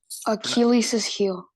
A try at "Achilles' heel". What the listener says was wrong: Yeah, not Achilles's, just Achilles. Achilles heel. Achilles heel.